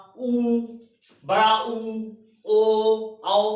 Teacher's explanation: लेकिन जब आप पश्च भाग का यूज करेंगे, पश्च भाग मतलब जीभ का अंतिम जो लास्ट का भाग है, जब आ बोलेंगे तो जीभ का लास्ट वाला आ, उ, बड़ा उ, ओ, आओ, तो जीभ का अंतिम भाग जो पश्च भाग है वो कार्य करता है